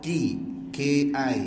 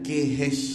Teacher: Maliki di sini kaf bawah ki, ki, jangan khi